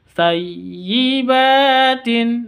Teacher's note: ba panjang 2 harokat karena fathah berdiri, ada tanda berdiri.